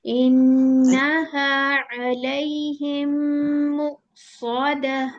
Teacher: आयत नंबर 8 के अंदर आपने मीम के बाद मीम आ रहा था ना, आपने वहां पे टू काउंट्स गुन्ना को मिस कर दिया।